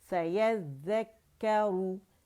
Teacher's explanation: را رو مخفف میں موٹی ہے